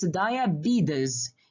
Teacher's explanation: You have to turn the T sound into D sound and the S sound into Z sound.